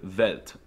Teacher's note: they pronounce the W's with a V sound, like in the word Welt